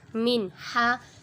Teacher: نون ساکن کے بعد ہا حروف ہلکی میں سے آ رہا ہے، ادھر اظہار ہو رہا ہے، ادھر غنہ نہیں کریں گے